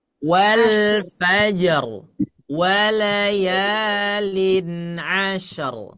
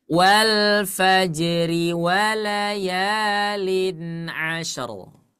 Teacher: Yang di ayat 1 kalau kita waqaf, rohnya dibaca tebal. Kalau kita bacanya kita sambungkan ke ayat 2 menjadi tipis.